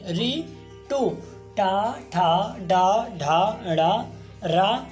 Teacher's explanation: इन वर्णों का उच्चारण स्थान मूर्धा होता है